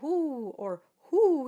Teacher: the o sound and that has to be very round it's like an owl saying who